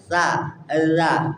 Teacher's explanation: Sa sama za di ujung lidah dengan gigi yang di atas.